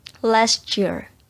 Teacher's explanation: Jadi ketika kita mengucapkan last year, jadi T-nya itu nggak dikeliatin. Jadi tidak bersuara T-nya. Jadi setelah kita mengucapkan last dan berubah ke kata year, jadi maka T becomes C.